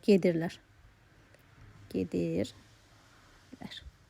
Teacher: Baxın burdakı lar şəxs onluğumuzdur. Vuruğu da ların üzərinə yox. Nəyin üzərinə düşəcək? Bir heca ondan əvvələ.